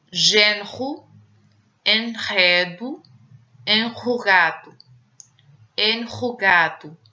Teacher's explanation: O R é pronunciado em Portugal similar ao R francês. Som uvular, isto é, atrás, na garganta, quando a pronúncia for forte. Isto é, quando a pronúncia for forte, vamos pronunciar na variante portuguesa esse R forte como um R francês, uvular, atrás na garganta.